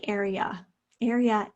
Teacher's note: area is again a schwa in the third syllable